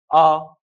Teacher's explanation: अ कंठ से उच्चारित होता है